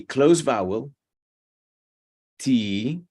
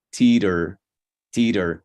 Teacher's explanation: we have a closed vowel tea followed by a more relaxed vowel